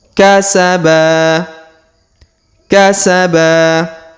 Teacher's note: huruf ba Kita panjangkan dua harakat karena di depannya terdapat Alif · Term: Mad asli